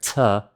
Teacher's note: This is the letter C, the t sound. It's an aspirated sound, so you're puffing air, t. And it's kind of like the English cha, but there's a difference.